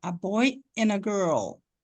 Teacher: Então, esse D ali virou um N. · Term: assimilação